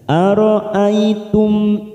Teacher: mim sukun Idhar syafawi kita baca jelas